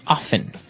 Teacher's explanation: They kind of leave out the strong t sound. Well, other people say often.